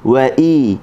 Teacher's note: Hamzah pula berbaris bawah. Hamzah baris bawah kita kena baca dengan i, kena lebarkan bibir mulut ataupun kena senyumlah.